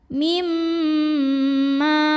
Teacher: Mim yang kedua ini adalah gunnah musyaddadah karena mimnya bertasydid. Maka bacanya dengung, bunyi M-nya tahan kurang lebih 2 harokat. Mimma. Jadi walaupun ada mim yang bertemu mim, karena mim pertama ini bukan sukun maka bukan idgham.